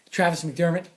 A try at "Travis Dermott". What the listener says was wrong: Travis Dermott. Not McDermott. No, it's Dermott.